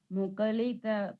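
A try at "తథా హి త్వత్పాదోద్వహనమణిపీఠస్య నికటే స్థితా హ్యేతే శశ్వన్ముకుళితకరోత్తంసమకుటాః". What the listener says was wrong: చిన్న మార్చాలండి. తథాహి త్వత్పాదో అదొకటి, ముకళిత అన్నారు, ముకుళిత.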